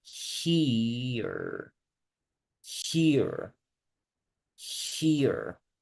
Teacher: So in this case, we have E, which is the vowel that we check, and then the schwa sound. Entonces, este diptongo sube y baja. Voy a decir I y voy a dejar caer el sonido.